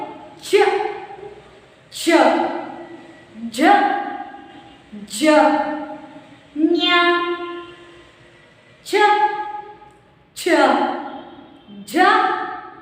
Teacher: तालु के सहायता से उत्पन्न उच्चारण होने वाला अक्षरों को हम कहते हैं तालुव्य